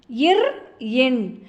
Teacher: மேல்வாயை நாக்கின் நுனி மிகவும் பொருந்துவதால் பிறக்கும் மெய்யெழுத்துக்கள்